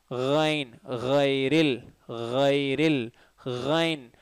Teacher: ரைன் வைப்ரேஷனோட சொல்லணும், காகலிங் sound இதில் இருக்கும்.